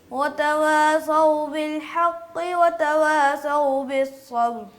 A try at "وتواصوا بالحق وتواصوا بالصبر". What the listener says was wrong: صاد کو موٹا کرنا ہے بیٹا. وتواصوا جی.